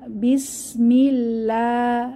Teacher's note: আল্লাহ শব্দের তাশদিদ ওয়ালা লামের আগের হরফে মিম মিমের নিচে জের এসেছে তাহলে জের থাকলে পাতলা করে পড়তে হবে বিসমিল্লাহ লাতে এক আলিফ মাদ হবে খাড়া জবর আছে তাহলে বিসমিল্লাহির